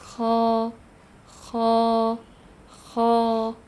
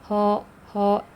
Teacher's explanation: untuk lidahnya karena huruf ko adalah tebal jadi dia naik ke langit-langit Detailnya nanti masuk ke sifatnya ko k ko jadi ditebalkan Bacanya